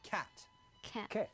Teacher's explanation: Other sounds which change are the A sound to a slight E sound.